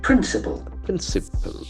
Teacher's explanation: it has got Accent on the first syllable